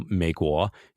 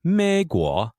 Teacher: it's a third tone followed by a second tone and this is one of the hardest combinations of tones and